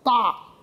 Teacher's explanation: 大这个声音是完全开口的低元音啊 ，这低元音大的声调是怎么样静切而下的，不是打也不是打，而是大最强烈的声音。江也是开口的原因啊，还有呢它有个余响的鼻音昂的那个鼻音，所以是响亮的，刚是响亮。你大江这两个字的字音本身就是强烈，而且是响度大。你谱起来怎